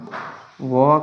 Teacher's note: व का उच्चारण स्थान दंत और ओष्ठ होता है। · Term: दंतोष्ठम